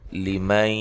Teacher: یہاں نون ساکن کا ادغام مع الغنہ ہے